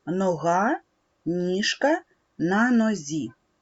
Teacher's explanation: нога ніжка на нозі корінь цих слів буде ног ніж нозь в цих словах відбувається чергування г ж зь